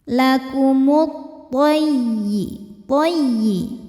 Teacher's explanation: Alif lam dinamakan dengan alif lam syamsiyah. Karena alif lam menghadapi huruf syamsiyah yaitu huruf tha. Maka alif lam tidak kita baca. Masuk bacanya ke ke tha ya atau disebut dengan idgham syamsi.